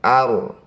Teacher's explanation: Ro sukun didahului fathah harus dibaca dengan tafkhim atau tebal. Angkat ujung lidah sampai menempel di langit-langit mulut. Getarkan ujung lidah kita sedikit saja.